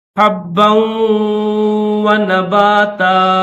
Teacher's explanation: بیہی حبا, ہا کو با کے ساتھ, با کو واو کے ساتھ, دونوں حرف مشدد ہیں. دیکھیں با بھی مشدد ہے, واو بھی مشدد ہے, تو دونوں کو سختی کے ساتھ پڑھیں گے.